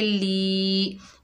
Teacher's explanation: लाम के नीचे ज़ेर, आगे या साकिन है, ये या मद्दा है, एक अलिफ की मिकदार खींच कर पढ़ेंगे